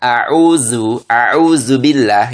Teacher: Sedangkan huruf Zai itu ujung lidah bertemu gigi bawah